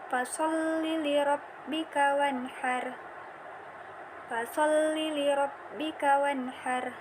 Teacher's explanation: Nun sukun bertemu dengan huruf ha, dibaca jelas.